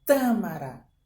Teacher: Ó, como eu fiz força, tâmara. Então, a sílaba forte é a tá